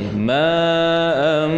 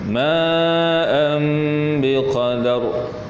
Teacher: Dengung tu pada makhraj mim · Dengung tu pada mim. Ma'am biqadar. Dengung 2 harakat, iqlab namanya.